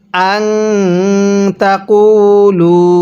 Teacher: কফের মধ্যেও টান দিব, লামের মধ্যেও টান দিব